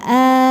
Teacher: Maka cara bacanya dibaca panjang ee ee dua harakat ya. A jadi bukan an tapi jadi a tanpa n. Ya ini jadinya mad iwad ada alifnya ataupun tidak ada.